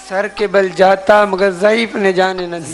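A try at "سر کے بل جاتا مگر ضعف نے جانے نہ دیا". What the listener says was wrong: ضعیف نہیں ہے یہاں،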